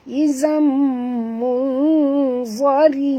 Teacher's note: Ra sini ra tarqiq, jangan baca tebal. Yang baca tebal za saja ya.